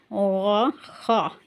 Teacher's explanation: درمیانی حلق سے اوپر یعنی منہ والی سائڈ سے پڑھے گئے